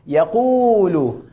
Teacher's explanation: اب اس نے واو مدہ کو پڑھا، اس کو تھوڑا کھینچ کے